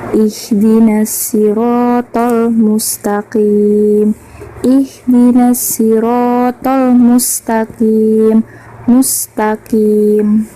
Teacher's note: alif lam qamariyah karena huruf alif lam bertemu dengan huruf mim. Dibacanya secara jelas.